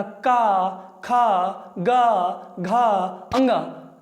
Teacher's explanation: ध्वनियाँ मेरे दोस्तों कंठ से आ रही हैं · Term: कंठ व्यंजन